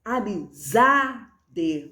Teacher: Amizade, o zá é mais forte. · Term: sílaba tônica